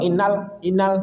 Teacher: Jadi sedikit alirkan suara karena lam sukun punya sifat bainiah.